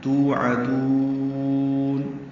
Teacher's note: توعدون واو مدہ ہے، 2 حرکات لمبا کریں گے. تو میں عین وسط حلق سے ادا کریں گے، دال کو لمبا کریں گے.